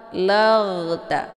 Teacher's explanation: Huruf ra yang sukun ini dibacanya secara dialirkan, laghta, bukan secara dipantulkan. Jangan nanti dibaca ballaghta, laghta, keluar bunyi g, tapi laghta.